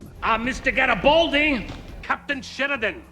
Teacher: it's largely inspired by Slavic and Romance accents, making it heavy on consonants with short vowels and a slight Italian lilt